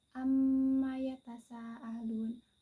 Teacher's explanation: Nah, hukum bacaannya yaitu guna. Lama bacaannya itu satu alif ataupun dua harokat. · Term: mim tasydid